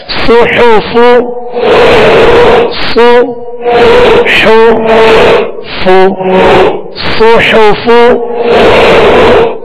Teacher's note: साद को पुर पढ़ेंगे और सीटी की आवाज है इसमें, और हा को दरमियाने हल्क से अदा करेंगे, और फा की अदायगी भी उसके मखरज से अदा करके इनकी हरकत को अदा करेंगे।